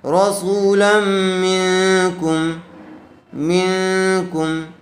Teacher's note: نون ساکن کے بعد حروف اخفاء میں سے کاف آیا ہوا ہے اس لئے غنے کے ساتھ اخفاء کر کے پڑھیں گے